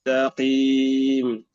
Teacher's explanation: أن نفخم الطاء ثم نرقق التاء